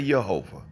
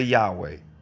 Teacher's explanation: knows you have some people say yahovah some people say Yahweh some people pronounce the V some people pronounce the W